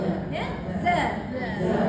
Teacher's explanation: Pastikan lidah kita, ujung lidah sentuh belakang gigi bawah. Dapat za. Ujung lidah pergi bawah ni biasa sentuh. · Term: sofir